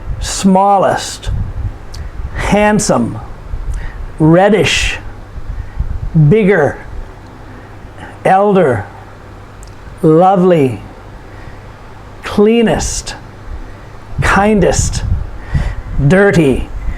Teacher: these are all two-syllable adjectives and the emphasis is put upon the first syllable